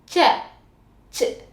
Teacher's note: அன்னத்தோட நடுப்பகுதியும் நாக்கோட நடுப்பகுதியும் சேர்ந்து இருக்கும்